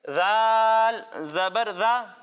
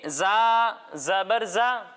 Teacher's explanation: جب ہم ذال کی ادائیگی کریں گے تو اس میں سیٹی کی آواز نہیں آئے گی، لیکن جب ہم زا کی ادائیگی کریں گے تو اس میں سیٹی کی آواز آئے گی